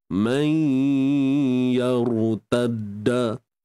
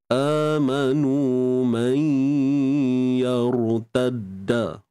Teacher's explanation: Untuk ra, kita kena baca tebal. Macam mana nak tebalkan ra? Kita kena angkat pangkal lidah.